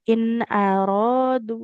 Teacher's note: kalau berhenti di in aradu, dalnya enggak boleh lebih dari dua harakat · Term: dua harokat